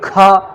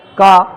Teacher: तो का बोल के ऐसे हाथ उल्टा हाथ करके देखिए, का हवा बहुत कम आई, और फिर बोलिए खा हवा कितनी ज़्यादा आई। तो जो ज़्यादा हवा आई वो है महाप्राण और जिसमें हवा कम आई वो है अल्प प्राण।